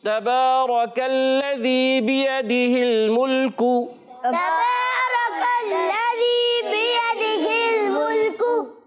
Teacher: काफ को बारीक रखना है